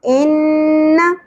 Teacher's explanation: نون مشدد غنہ کے ساتھ زبر کو شارٹ رکھنا ہے، زیادہ نہیں کھینچنا